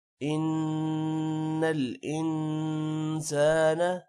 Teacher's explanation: ان کے نون پر غنہ ہوگا، انسانہ والے نون پر بھی غنہ ہوگا